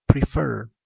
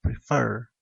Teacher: prefer es un verbo de dos sílabas, pero la mayor fuerza de voz recae en la segunda sílaba, prefer. Y la regla dice que si hay un verbo de dos sílabas y la mayor fuerza de voz recae en la última, se le duplica la última letra.